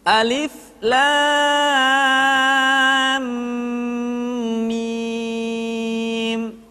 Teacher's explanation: Alif Alif kemudian lam dibaca panjang la selama en harakat kemudian mim dibaca ditahan tidak boleh gesa-gesa Karena setelah mim mati diikuti oleh huruf mim sehingga berlaku hukum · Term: idgham